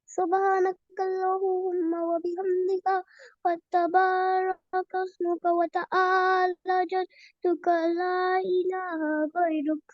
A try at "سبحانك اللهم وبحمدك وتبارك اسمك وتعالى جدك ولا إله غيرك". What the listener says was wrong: Yes, you draw it right, but you didn't read it right. So, وتعالى longer. سبحانك اللهم وبحمدك وتبارك اسمك وتعالى جدك ولا إله غيرك. وتعالى جدك ولا إله غيرك. وتعالى جدك ولا إله غيرك.